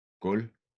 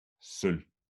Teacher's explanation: When we have the letter combination LV in the ending of a word, V is never pronounced.